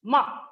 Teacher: ma with falling pitch